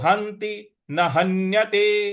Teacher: ह के बाद जो आधा न है उस पर हमको आघात देना है